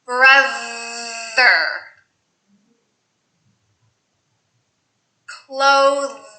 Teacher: voice th sounds in the middle of the word same thing make sure you use your voice your tongue is slightly out